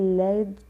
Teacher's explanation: वे व्यंजन जिनके उच्चारण में जीवा मसूड़े को छूती है, अर्थात हवा जीवा के अगल बगल से निकल जाती है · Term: पार्श्विक व्यंजन